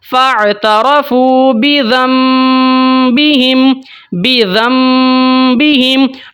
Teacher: نون کو میں نے ختم کیا، وہاں پر میں نے میم پڑھا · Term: اقلاب